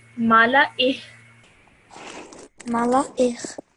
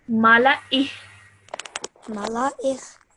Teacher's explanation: At the end, you just add a slight hint of the h sound.